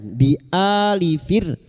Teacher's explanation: ra sukun yang didahului kasroh dibaca tarkik atau tipis